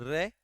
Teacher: र जीवा ऊपर घूमती है मुर्धा के पास फिर वायु बाहर निकलती है तो कंपन के साथ उच्चारित होता है